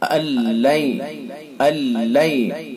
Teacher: مکمل ادغام ہو جائے گا اور اس کے اندر غنہ نہیں ہوگا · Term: ادغام تام بلا غنہ